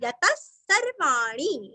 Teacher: विसर्ग का उच्चारण आधा स